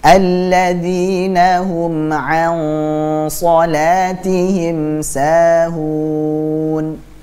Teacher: shad itu termasuk huruf tebal, maka gunnahnya, dengungnya kita tebalkan. Alladzina hum an, jadi bukan an shalah tapi an, dan siap-siap ke makhrajnya huruf shad. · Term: ikhfa